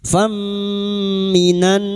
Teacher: Fathah tanwin pada huruf fa bertemu mim idgham bighunah. Masuk ke huruf mim dan mendengung selama tiga harakat. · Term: idgham bi gunnah